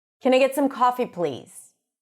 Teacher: I could use a lower pitch and a more Stern voice to be more demanding